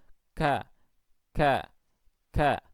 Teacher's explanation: ketika mengucap kaf itu memang pangkal lidah yaitu diarahkan ke atas dan nempel ke area di antara langit-langit keras dan langit-langit lunak, tetapi di sini tidak ada penyempitan pada rongga tenggorokan. · Akhirnya di tengah-tengah ini tidak ada cekungan, tidak seperti yang tadi terjadi pada bacaan tebal atau at-tafkhim. Sehingga ketika kita mengucap huruf kaf dan huruf-huruf istifal lainnya, itu kita mengucapnya tanpa diiringi dengan apa? Dengan gema atau gaung. Jadi cukup ka, ka, ka, tidak ko, tidak begitu. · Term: at-tarqiq